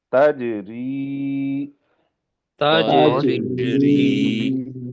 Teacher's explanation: رے کو پتلا پڑیں گے کیونکہ رے کے نیچے زیر آ رہی ہے